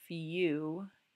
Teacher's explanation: you hear that y before the long u